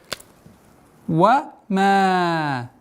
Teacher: Мягкое произношение звука ма и удлинение в размере 4 огласовок.